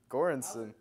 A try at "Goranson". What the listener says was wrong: Pronounce it like the A isn't there. So it's like Gornson.